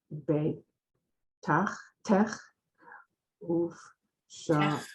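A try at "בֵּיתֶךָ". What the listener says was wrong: It's beitecha. Don't forget the vowel under that last letter.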